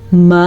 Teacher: اس مد کو تقریباً 2 سیکنڈ تک ہم نے لمبا کرنا ہے۔ اس مد کی مقدار 2.5 سے 3 الف کے برابر ہے